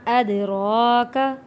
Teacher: دال حروف کلکلہ میں سے ہے، یہاں ہم نے کلکلہ ادا کرنا ہے، یعنی کہ آواز واپس پلٹ کر آئے گی۔